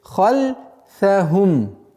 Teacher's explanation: Здесь ха у нас твердое произношение, и поэтому нужно на это обращать внимание, чтобы эта твердость не перешла в остальные звуки.